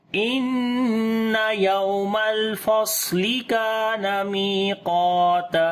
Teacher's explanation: काफ को मोटा पढ़ेंगे और अलिफ भी मोटी पढ़ी जाएगी काफ की वजह से, और लंबा भी करेंगे